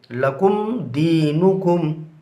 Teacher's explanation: यहाँ पर मीम साकिन के बाद बा और मीम के अलावा यानी दाल आ रहा है, लिहाजा मीम साकिन को ज़ाहिर करके पढ़ेंगे